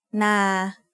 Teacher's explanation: So now that we know what a live sound is, we can learn our first tone rule, which is low class initial consonant plus live ending equals mid-tone. A mid-tone is pronounced at a flat pitch in the middle of your regular vocal range. Na is an example of a mid-tone syllable.